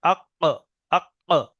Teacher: এটা কফের মাখরাজ। জিভের গোড়া তার বরাবর উপরের তালুতে লেগে উচ্চারণ হয়, 2 নক্তাওয়ালা কফ।